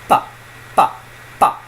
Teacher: Now ba, ba almost sounds a bit like a B when you first hear it because you're so used to this pa sound. But an unplosive bilabial stop, unvoiced, non-plosive, non-aspirated